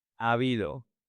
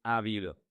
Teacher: Attention with the pronunciation. The two A's merge. So, you don't say a habido.